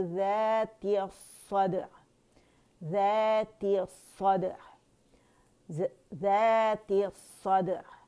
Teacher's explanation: عین کا توسط شو کریں گے, عین باریک سے موٹا نہیں کریں گے